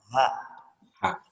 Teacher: Huruf H di sini makhrajnya atau asal pengucapannya ini di tenggorokan bagian dalam. Kalau mau kita pegang berarti di pangkal leher.